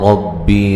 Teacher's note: ربی را کو موٹا ادا کیا جائے گا، را کے اوپر زبر ہے